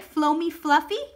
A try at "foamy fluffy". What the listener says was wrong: Foamy fluffy, not floamy. It's foamy fluffy.